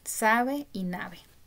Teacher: en las variables dialectales de América Latina de los diferentes países estos dos sonidos se pronuncian igual